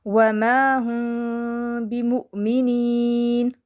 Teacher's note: میم ساکن کی آواز کو ہم نے ہائڈ کرنا ہے، غائب کر دینا ہے · میم ساکن کے بعد با آئے تو غنہ کے ساتھ اخفا کریں گے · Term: اخفا شفوی